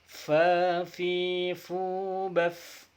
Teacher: Baf itu dilepaskan nafasnya. Tidak ditahan, baf harus dilepaskan. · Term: huruf hamas